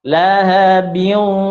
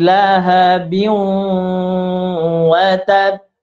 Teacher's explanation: Cara mendengungkannya adalah dimasukkan ke huruf waw dulu, kemudian baru didengungkan. Maka membacanya lahabiu, masukkan ke hidung.